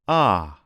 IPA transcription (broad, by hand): ɑ